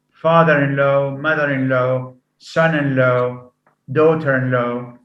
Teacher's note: compound receives stress on the first element that's why the second element is reduced sometimes · the primary stress falls on the first element